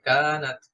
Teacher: যদি আমি থেমে যাই তাহলে এক আলিফ টান হবে